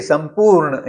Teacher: यहां प वर्ग का जो अनुनासिक है उस म को आधा किया हुआ है। संपूर्ण हिंदी में उसको संपूर्ण बिंदी देके लिखा जाता है।